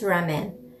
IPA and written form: ˈrɑːmən (RAMEN)